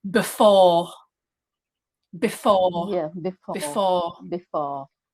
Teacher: with the english pronunciation the second syllable is stress